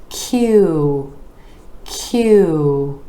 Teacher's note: the back of the tongue rises up to the palate and then the lips are moving forward